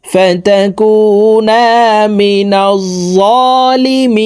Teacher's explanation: তিন আলিফ টেনে নুনকে সাকিন করতে হবে